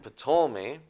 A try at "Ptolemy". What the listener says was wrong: Ptolemy. Just Ptolemy. You don't have to pronounce the P.